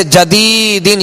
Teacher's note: اسی طرح جدیدن، یہاں یا مدہ ہے، یا مدہ کو ایک الف کی مقدار کھینچ کر ادا کریں گے